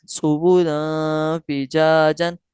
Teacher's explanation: تو حروف اخفا میں سے فا آ رہا ہے، لہٰذا ہم غنہ کر کے پڑھیں گے